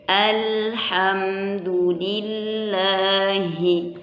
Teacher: nggak boleh jangan dikolkolahkan ya, nggak boleh, dia harus ditahan